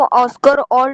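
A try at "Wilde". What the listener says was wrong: वाइल्ड, वाइल्ड, ओल्ड नहीं, WILD, वाइल्ड to Urdu शायरी, शायरी को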